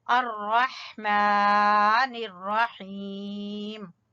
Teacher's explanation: मीम को खड़ी जबर की वजह से खींचेंगे